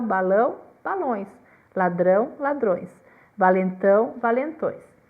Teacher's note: A maioria, e aqui também nós incluímos os aumentativos, além do acréscimo do S, apresenta alternância da vogal e da semivogal